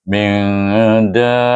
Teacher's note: Cenderungnya bacaannya lebih kepada, kalau kubra cenderung pada izhar. Jadi bacaan efa antara izhar dengan idgham, tapi cenderung pada izhar dan dibacakan dengan 2 harakat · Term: efa kubra